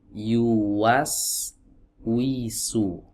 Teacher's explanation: makhraj huruf wau dari dua bibir yang dimajukan